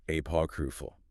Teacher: The phonetic challenge here is hitting that P stress distinctly and also making sure the R sound in the middle isn't swallowed